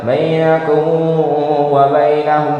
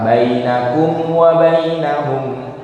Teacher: Hati-hati jangan sampai diikhfakan karena makhraj mim dengan waw makhrajnya sama. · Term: idhar syafawi